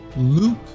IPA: lu:k